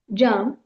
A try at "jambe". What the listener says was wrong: Yeah, that went pretty well. Just remember that the J is going to be soft, so it's not going to be jamb, it's going to be jambe. Okay, but that went well.